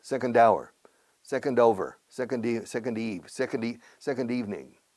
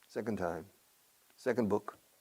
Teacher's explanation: la D aparece de manera descarada y de manera mandona, fonéticamente, si hay sonido vocal después